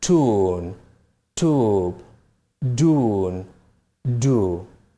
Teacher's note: In American English, they are pronounced just with U